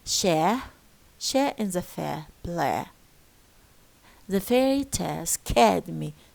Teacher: this diphthong disappears and is being replaced by a pure long vowel eh. So here eh.